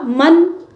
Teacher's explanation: नून को साफ जाहिर करके पढ़ेंगे जिसको इजहार कहते हैं इसलिए कि नून साकिन के बाद जो हमजा आ रहा है